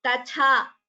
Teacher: please note here this word tatha, ta followed by tha, mahaprana. So this alpaprana ta and tha should be chanted clearly.